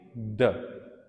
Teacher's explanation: द जब आप कहते हैं तो आपकी tip of द tongue is touching एल्वीलर ridge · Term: एल्वीलर साउंड्स